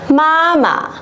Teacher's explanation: Một lần nữa chúng ta đã bắt gặp âm tiết mang thanh nhẹ đứng ở phía sau, đúng không ạ? Vậy thì chúng ta vẫn sẽ dồn trọng âm vào âm đằng trước và đọc lơi cái âm đằng sau ra nhá